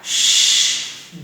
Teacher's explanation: Do I feel any vibration? No, we do not feel any vibration right here in the vocal cord. So this is un-Y sound.